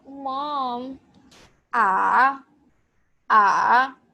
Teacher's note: The third tone is basically falling and rising tone.